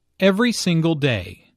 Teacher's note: Notice that each word here is stressed. The speaker wants to make a point, so she emphasizes each word equally.